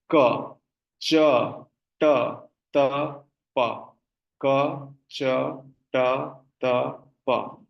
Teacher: It's going from the back to the front.